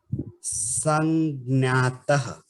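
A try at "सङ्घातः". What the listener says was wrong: It is Ngakara. And next, below that is Gha. Ka, kha, ga, gha. The fourth letter.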